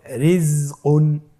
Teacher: রয়ের নিচে জের রয়েছে, এই রটাকেও আমাদেরকে পাতলা করে পড়তে হবে